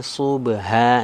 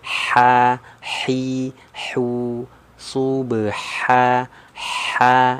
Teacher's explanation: kecil tipis ya anginnya keluar